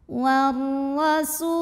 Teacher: Lalu berikutnya ada hukum alif lam syamsiyah. Karena alif lam menghadapi huruf syamsiyah yaitu ra, maka alif lam tidak dibaca, diidghamkan atau dimasukkan ke ra.